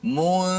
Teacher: Zal hujung lidah di bawah gigi atas, kan? Daripada mim terus pergi zal. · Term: huruf zal